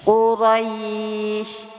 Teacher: ada mad layyin atau madlin, pembacaannya lunak, lembut, ya, dan panjangkan